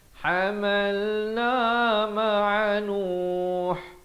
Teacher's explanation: Ha pedas di pertengahan kerongkong